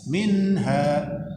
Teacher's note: nun mati berjumpa dengan ha, itu hukumnya izhar, dibaca jelas